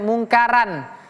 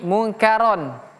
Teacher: Ini juga sama rnya tebal tidak boleh kita baca munkaran tapi munkaron. Ro ro tidak ada ra dalam bahasa Arab bukan ra tapi ro.